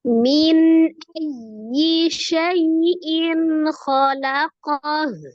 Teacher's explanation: hamzah itu salah satu huruf dari al-halqi, tenggorokan, tepatnya tenggorokan bagian bawah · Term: izhar halqi